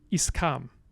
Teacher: One language that many of you may be familiar with that has a different syllable structure is Spanish, where S is not allowed to be hanging out on the edge of a syllable like that, typically. So you get an epenthetic vowel, or a prosthetic vowel, technically, e, that goes on the front and makes the valid syllable structure